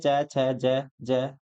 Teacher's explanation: वे वर्ण जिनका उच्चारण जीभ के तालु से स्पर्श होने पर होता है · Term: तालव्य वर्ण